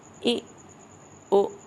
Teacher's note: حمزہ پہ جب جزم آتی ہے نا تو جھٹکا آتا ہے، ٹھیک ہے؟ اے او، حمزہ پہ جزم آ رہی ہے تو جھٹکے کی آواز ہے، ٹھیک ہے؟